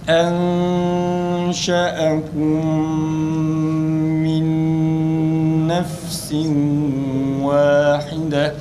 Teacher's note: Enşe'ekum idgam misteyn aynı zamanda mim harfinde gunne sıfatı olduğu için idgam-ı ma'al misteyn ma'al gunne. Ondan sonra ise min nefsin bu sefer idgam ma'al gunne gelmiş.